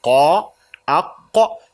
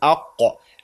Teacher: When you say qa, aqqa, the back of the tongue goes up to block the airflow. So you say aqqa. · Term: qaf